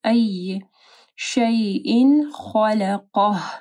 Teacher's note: خا کو موٹا پڑھنا اور قاف کو بھی